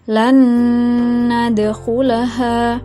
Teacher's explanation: idgham bi gunnah ini harus dibaca secara berdengung